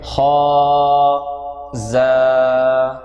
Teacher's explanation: زا یہ 1 حرفی حروف ہے، اس کے اندر سیٹی بھی آتی ہے